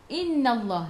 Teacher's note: Nun ada sabdu, tekan ke dalam nun dan dengung 2 harakat wajibul gunnah.